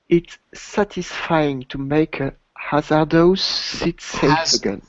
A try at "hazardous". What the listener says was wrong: Hazardous. Not O, but Hazardous. Yeah, I'm still hearing an O. It's not dose. It's dis.